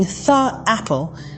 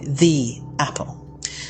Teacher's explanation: The E sound is more pronounced, more stretched out.